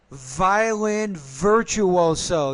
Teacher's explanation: You need to pronounce that V with more vibration.